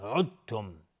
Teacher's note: پس اینجا چون ساکنه بعدش تا اومده عدتم. دقت کنید دال در تا ادغام میشه عدتم میشه ادغام متجانسین